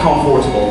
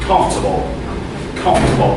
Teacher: The right way is no O, no R.